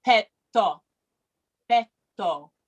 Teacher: I heard oh, right? But in Italian, petto, petto. It doesn't do the oo at the end. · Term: purity of the vowel